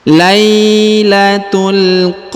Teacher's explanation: karena di depannya terdapat Ya Sukun Lailatul Perhatikan ya Lailatul ini huruf ta marbutah langsung sambung masuk ke huruf alif lam qamariyah · huruf la diayun ya sekali karena di depannya terdapat Ya Sukun